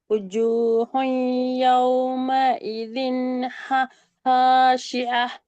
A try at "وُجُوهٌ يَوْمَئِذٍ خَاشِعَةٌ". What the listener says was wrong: ஐன் மாறுது. ஐன் ஐன் ஐன் அல்ல. இன். இன். இன்.